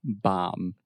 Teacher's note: The B is silent.